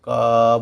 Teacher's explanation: तो आप क बोलेंगे तो अंत में आपको अ ही सुनाई पड़ेगा। इससे ये भी साबित होता है कि प्रत्येक व्यंजन वर्ण में अ की ध्वनि जो है वो निहित होती है और व्यंजन वर्णों का उच्चारण हम लोग लंबे समय तक नहीं कर सकते।